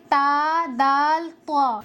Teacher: जबान की नोक सनाया उलिया की जड़ से मिलकर अदा होते हैं। जबान की नोक ये है और सनाया उलिया की जड़ ये है।